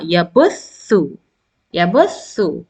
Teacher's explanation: tha is pronounced from the tip of the tongue when it is little bit outside and in between the upper incisors and the lower incisors. Ya dhamma, tha fatha, noon, shadda and kasra.